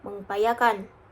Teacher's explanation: Men tambah upaya sama dengan mengupayakan. Itu karena N menjadi ng karena U adalah vokal